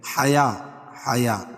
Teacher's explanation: یا کے اوپر کھڑا زبر قائم مقام الف مدہ کہ اس کو ایک الف کے برابر کھینچ کے پڑھیں گے